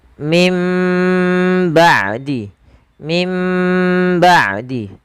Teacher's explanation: Tapi kita lebih mengambil yang idbaq, yaitu bacaan yang dia bibir kita rapat seutuhnya